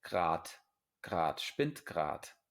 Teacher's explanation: Spinnt gerade. Y muchas veces no se pronuncia la E en esta palabra. Ninguna de las dos E se dice grad, grad, spinnt grad o gerade, ¿vale?